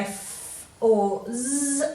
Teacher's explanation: So if you say f or z, you'll feel the friction as you say them. The z is really easy to feel because it even makes your tongue tingle. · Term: fricative